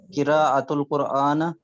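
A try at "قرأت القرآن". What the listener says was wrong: No, Hamza is sakin. Hamza is sakina. Qara'tu al-Qur'ana.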